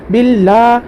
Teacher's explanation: بل میں لفظ اللہ کے لام کا قاعدہ ہوگا، لفظ اللہ کے لام سے پہلے باقی نیچے زیر ہے، لفظ اللہ کے لام کو باریک پڑھیں گے